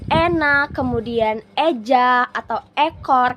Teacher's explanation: madya atas depan ini posisi mulutnya itu ada di semi terbuka.